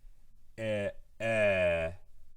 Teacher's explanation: it's a sustained version not a clipped version of the e sound